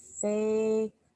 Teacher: this is one of those special sounds where the N sounds like ng